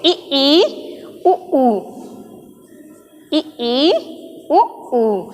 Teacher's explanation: जब हम इसका उच्चारण करते हैं कैसे? ई ई उ ऊ, तो लगभग हमारा मुंह जो है वो बंद है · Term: समवृत्त स्वर